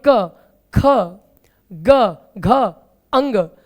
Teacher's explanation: का वर्ग के पांचों व्यंजन का उच्चारण स्थान कंठ है